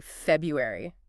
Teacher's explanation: a lot of people just say February. They just swallow that first R.